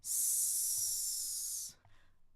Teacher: the S on the ridge, giving some friction.